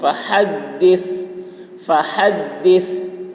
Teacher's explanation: ہا کو حلق صدا کریں گے